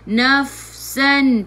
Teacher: Naf masuk ke fa ada sukun. Fa sifat hurufnya hamas, kena ada angin. Jangan melantun. Jangan baca hunafasan, nafasan.